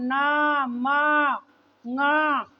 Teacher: नाक से बोली जाती है, इसीलिए इसे नासिक्य वर्ण कहते हैं